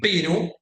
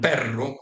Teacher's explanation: we have different phonemes for the tap ere and the trill r